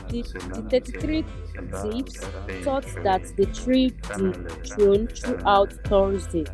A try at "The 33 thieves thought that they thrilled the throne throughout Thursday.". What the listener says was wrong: That thrill, pronounce the D. So when you pronounce throughout, pronounce the last D. Not throughout Thursday, but throughout Thursday.